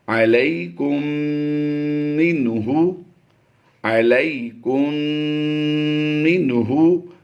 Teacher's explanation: میم ساکن کے بعد جب بھی دوسری میم آتی ہے تو وہ میم مشدد ہوتی ہے، اور اس میم کو ہم نے غنہ آنے کی آواز دے کر پڑھنا ہوتا ہے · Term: ادغام شفوی